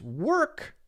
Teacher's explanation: in the case of work, in this specific case, there is no OR sound. It's just the R sound.